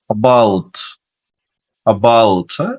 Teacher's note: বাংলা যে আমরা এ বলি সেই এটা হালকা করে উচ্চারণ করবে, হালকা মানে 50% উচ্চারণ হবে, বাকি 50% হবে না।